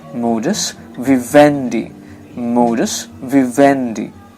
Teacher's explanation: the primary accent falls on the syllable ven. It means it will sound louder than the other syllables